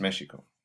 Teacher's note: That X is actually a sh sound.